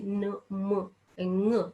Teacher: when we say न म ng, हे sound थोडेसे नाकातनं हवा बाहेर येते आणि नाकातून त्यांचा आवाज निघाल्यासारखा वाटतो, आणि म्हणून त्यांना नेझल साऊंड असं म्हणतात.